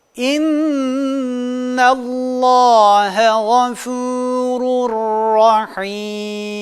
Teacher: idğamı bila gunne uygulamasını yaptığımızda bakınız hem kolaylaştıracak hem de güzelleştirecek ra harfini şeddeli ymiş gibi okuyoruz · sonra lam veya ra harfi gelirse idğamı bila gunne gerçekleştirilir yapılır burada nun ve tenvin seslerini iptal ediyoruz ve şeddeli ymiş gibi harfi lam veya ra harfini şeddeli demiş